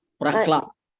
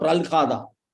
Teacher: When la comes, ha only will pronounce first.